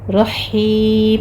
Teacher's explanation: رحیم میں ہا وسط حلق سے آپ نے باریک ادا کرنی ہے